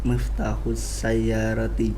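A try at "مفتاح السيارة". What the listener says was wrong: Mumtaz. Miftahus sayyarati. Bagus sekali.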